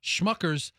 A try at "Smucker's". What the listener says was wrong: No, it does. Smuckers. It's not Schmuckers. Yeah, it's Smuck. With a name like Smuckers, it's gotta be good. It's SM. SCHM.